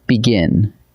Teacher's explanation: The emphasis lands on the second syllable, on gin.